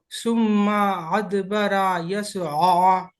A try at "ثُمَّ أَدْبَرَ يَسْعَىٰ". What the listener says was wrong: सीन को मोटा पड़ जाता। ثم أدبر يسعى، ثم أدبر يسعى، ثم أدبر يسعى. يسعى. يس سين बारीक।